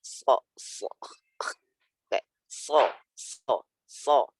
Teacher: Dia punya sifat isti'la dan sifat itbaq. Makanya dia suaranya berat gitu. Enggak cuman sekedar sin diganti vokal O. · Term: sifat isti'la dan itbaq